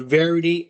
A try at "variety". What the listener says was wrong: He said varity. That's one of the words he always mispronounces. It's variety, but he said varity.